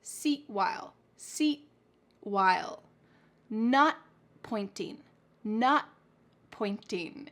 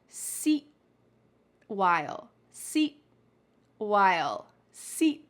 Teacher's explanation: I am making the T shape with my mouth. My tongue is at the top of my mouth, but I'm not letting that puff of air come out. It is stopped in my mouth.